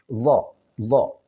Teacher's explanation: Dho ini adalah posisinya di sisi lidah. Baik menggunakan sisi lidah yang menempel ke pipi bagian kanan ataupun bagian kiri atau kedua-duanya.